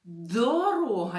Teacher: так звук д - це приголосний твердий